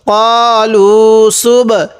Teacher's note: এই বাটা একটু ধাক্কা দিয়ে পড়বো, কারণ বাটা তো কলকলার হরফ